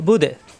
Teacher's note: ওয়ালা 3 আলিফ টান, ইকফা গুন্না, তুম এক আলিফ টান কণ্ঠনীতে চাপ দিয়ে, 2 এক আলিফ টান, মা 3 আলিফ টান, মেলবে আইনের সাথে বুদে, এই বু মিলবে দালের সাথে, দালে সাকিন হয়ে যাবে, দাল সাকিনে কলকলা হয়ে যাবে, বু মিলবে দালের সাথে, বুদে ধাক্কা হবে, বুদে।